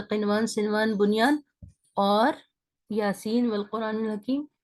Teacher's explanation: نون ساکن کو clear sound کے ساتھ بائی ٹچنگ اوپر کے تالو سے زبان کی نوک کو لگا کر پڑھیں گے وداؤٹ غنہ، بغیر غنہ کے. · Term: اظہار